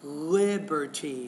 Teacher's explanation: stress is on the first syllable there